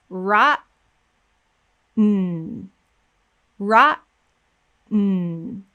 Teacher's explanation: I want you to listen and hear that there's no vowel sound going into the N. My voice is actually not going to start up again after the T until I am producing the N.